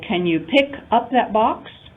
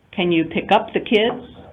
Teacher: the stress would fall on the particle element up because it's part of the phrasal verb to pick up · Pick being the verb, right? So we would place the stress on pick.